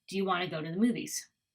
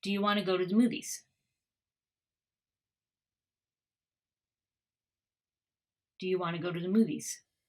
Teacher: So again, we're kind of flattening the sound and then changing some of the sounds too. So you can see that the schwa, you becomes ya, to becomes ta in both places here.